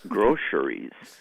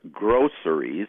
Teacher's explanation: you can pronounce it with two syllables or three syllables and you can pronounce it with an s in the middle or a sh and like an sh sound in the middle now most language authorities say that the s sound is preferred